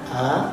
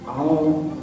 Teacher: Yang pertama itu jelas a, yang kedua dari pangkal hidung. Kalau bahasa kerennya sengau, kalau bahasa Jermannya ngirung.